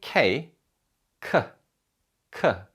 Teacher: an aspirated consonant sound is produced with a burst of air coming out of your mouth a typical example of this is the k sound in english